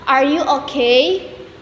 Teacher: For example, such as, "Are you okay?" So the word "okay" is getting emphasized because the speaker wants to assure the listener is okay. In a sentence, rising tone means caring or making sure